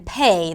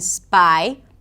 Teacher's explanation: the aspirated P as in 'pay', that exists in English as well. Or a regular P as in a 'spy'.